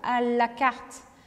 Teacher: O la em francês é apenas com a pontinha da língua. Ela dá um toquezinho no céu da boca.